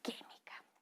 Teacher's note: las palabras esdrújulas son aquellas que tienen mayor entonación de voz en la antepenúltima sílaba